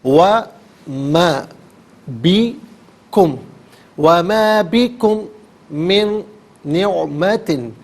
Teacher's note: بکم میں میم ساکن ہے، اسے من کی میم کے ساتھ ملا کر میم کی آواز کو غنے کے ساتھ ادا کریں گے